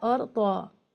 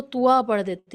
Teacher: شئی طا کو ایک تو کھینچ کر پڑھنا ہے اسٹینڈنگ زبر یا کھڑا زبر ہونے کی وجہ سے، اور پھر طا کو لوگ موٹا کرنے میں غلطی یہ کرتے ہیں، لوگ اس کو توا پڑھ دیتے ہیں، شئی توا، شیطان الرجیم. توا نہیں پڑھنا ہے، طا پڑھنا ہے ہیوی ساؤنڈ کے ساتھ میں